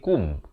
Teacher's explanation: Di sini kum. Kaf baris dhammah bunyi ku, bukan bunyi ko. Dia bertemu mim jadi kum.